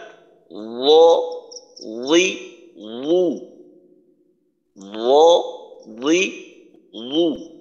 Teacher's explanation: র মাখরাজ হলো জিহ্বার আগায়, জিহ্বার আগাটা দাঁতের সাথে আগার সাথে লাগে, উচ্চারণ হয় ল